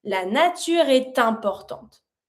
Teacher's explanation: And you pronounce your T from A with importante. You connect it.